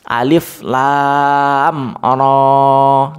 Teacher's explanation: Nah, ronya itu harokat berdiri, bukan harokat seperti alif. Jadi dia tidak dibaca 5 harokat atau 6 harokat, tapi dia dibaca 2 ketukan atau satu alif atau 2 harokat.